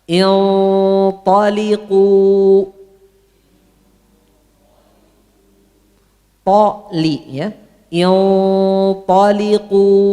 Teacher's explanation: Ini otomatis gunnah ikhfa'nya tebal karena setelahnya ada to.